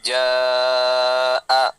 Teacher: Kalaupun tandanya tidak ada, tetap dibaca panjang 4. Jaa. Karena ada mat bertemu hamzah.